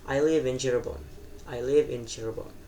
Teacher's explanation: Nah, maksudnya dari fall intonation atau enggak eh turun di akhir kalimat itu kayak kata yang di akhir kalimat itu nadanya turun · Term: falling intonation